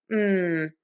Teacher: I am going to make that with lips that are pressed together